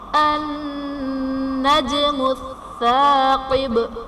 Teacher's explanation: جیم حرف قلقلہ ساکن ہے تو یہاں پر قلقلہ خوب ظاہر کریں گے